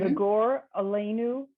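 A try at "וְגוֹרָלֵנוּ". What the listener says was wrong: So I'm going to take issue with one word. third word from the last that you read, Vigoralenu. you're bringing together the O and the resh. syllable ends at the O, the go,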